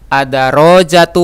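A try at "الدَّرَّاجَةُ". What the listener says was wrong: Ra-nya ditasdid.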